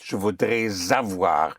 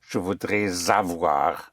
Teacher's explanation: whenever you push the S into the vowel, it takes on the sound of a Z